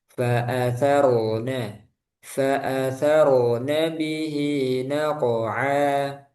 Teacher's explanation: Tebalkan ro sukun sama kof sukun.